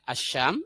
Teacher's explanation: ini alif lamnya lebur ke shin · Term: alif lam syamsiah